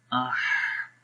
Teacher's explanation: ٹھیک ہے، جیسے آہ، تو ہا کے اندر کیا ہوتا ہے جب ہم ہا کے پڑھتے ہیں تو اس میں تھوڑا سا سانس جاری رہتا ہے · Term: ہا کی آواز